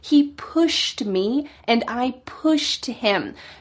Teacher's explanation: He meant to use the past tense here, but he just cut off the ed.